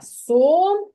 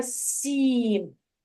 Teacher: перший звук твердий приголосний у слові сом А у слові сім звук перший звук М'який приголосний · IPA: [с] ,[сʼ]